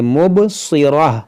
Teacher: یہاں پر بھی جو مد ہے مد منفصل ہے، نون میں غنہ کریں گے، یہاں مبصی، اس صاد حروف مشتعلیہ ہے، اس کو موٹا پڑھیں گے، مبصرہ، وقف ہم نے کیا تو مبصرہ پڑھا، گولتا کو ہم نے ہا ساکنہ بنایا۔